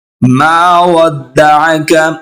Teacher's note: मा एक अलिफ के बराबर खींचेंगे। हरूफ मद्दा 3 होते हैं, अलिफ, वाव और या।